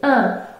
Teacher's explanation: Pour prononcer le son « un », vos lèvres sont étirées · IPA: /ɛ̃/